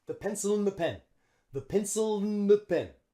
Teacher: instead of and we say un and we drop the D